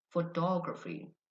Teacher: Photography. The stress is on the second syllable.